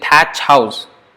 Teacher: palatal unvoiced aspirated is cha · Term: aspirated unvoiced